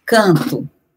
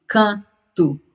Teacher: será que esse N que está lá na ortografia é um N mesmo? Ou será que é só um K e uma vogal nasal an?